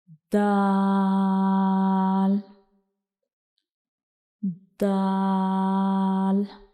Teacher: दाल को पढ़ते हुए हमारी जुबान की जो नोक का ऊपर वाला हिस्सा है, यह ऊपर की तरफ जाएगा और जो हमारे सामने वाले दो दांत हैं, उनके जो अंदर वाली साइड पे मसूड़े हैं, उनको टच करेगा।